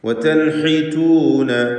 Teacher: ഹദീം ബാദ് അതിൻ്റെ മഖ്റജിൽ നിന്ന് ഉച്ചരിക്കാനും ശ്രദ്ധിക്കുക പ്രത്യേകം. വതൻഹിതൂന സാക്കിനത്താനൂനും ശേഷം ഹഉമാണ്, ഇൽഹാർ ഹൽക്കി നൽകി മണിക്കാതെ വെളിവാക്കുക